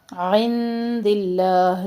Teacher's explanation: نون ساکن کے بعد دال تو یہاں پہ باریک اخفا کر رہے ہیں